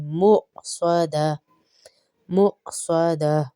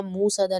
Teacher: یہاں پر اب مؤ میں ہم جھٹکا دیں گے کیونکہ یہ واو مدہ نہیں، یہاں پہ حمزہ کی ادائیگی ہوگی ، مؤصدہ، مؤصدہ، انہا علیہم مؤصدہ، یہاں موصدہ نہیں پڑھیے گا،